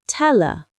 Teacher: The L sound links to her. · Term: connected speech